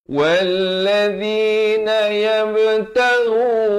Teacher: ghain di hujung kerongkong bari dhammah 2 harakat.